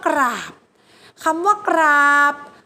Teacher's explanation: กไก่ควบกล้ำกับรอเรือมันอ่านออกเสียงตัวรอเรือไปด้วยจะเป็นคำควบกล้ำแท้ทันที